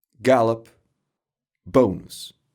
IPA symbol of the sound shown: ə